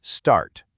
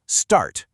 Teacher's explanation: Over on the left in the UK, you'll hear start. Notice that the R is pretty much silent.